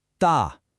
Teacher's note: The initial d plus the final a, but this time with the fourth falling tone.